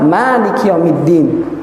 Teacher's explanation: Hafs mengucapkan Maliki Yaumiddin dengan memanjangkan mat